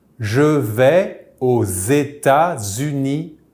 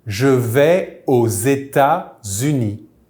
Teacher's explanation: we will make a Z sound for the liaison since this country starts with a vowel